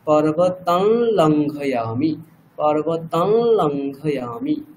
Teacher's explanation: লকারটাকে নাক দিয়ে ল বলছি